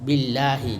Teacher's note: murakkakah, yaitu tipis. Billahi, karena ada baris kasrah sebelum Allah.